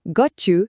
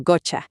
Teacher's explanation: una T más un sonido Y se convierte en un sonido ch